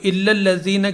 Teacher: لذین کا جو لام ہے وہ مشدد ہے لام، لیکن وہاں غنہ نہیں ہوگا. صرف میم مشدد اور نون مشدد میں غنہ ہوگا، اور اس کو غنہ کے آواز کے ساتھ ہم پڑھیں گے.